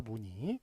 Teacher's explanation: 일단은 저기 자음이 앞에 오면 뭘로만 소리 난다? 이로만 소리 난다.